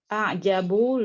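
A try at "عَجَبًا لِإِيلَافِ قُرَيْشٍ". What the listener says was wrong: Bukan a'jabu ya, i'jabu. Kalau jimnya kasrah baru a'jibu. Jimnya fathah.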